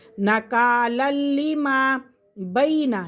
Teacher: فجعلناها نکالا لما، نکالل، یہاں پہ بھی ہم غنہ نہیں کریں گے کیونکہ لام یرملون میں سے ہے، ٹھیک ہے۔ لام اور را کے اندر غنہ نہیں کرتے تنوین کے فوراً بعد